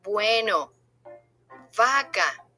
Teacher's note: The letters B and V both sound like a B as in boy